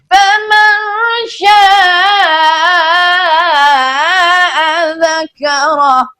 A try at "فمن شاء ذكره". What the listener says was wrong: غنہ چھوڑ گئے فمن پہ.